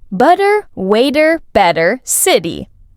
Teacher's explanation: the t sound in the middle of words like butter often becomes a soft d sound. So instead of butter, Americans say butter. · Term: flap